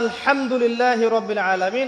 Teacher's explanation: হা এর মাখরাজ কোথায় বলেন একজন? কণ্ঠনালীর মাঝখান থেকে। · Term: হায়ে হত্তি